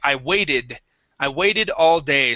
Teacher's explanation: in American English, we change our T's, our T sound, a lot of times to a D sound, especially when a word ends with a T and we put an ED on the end.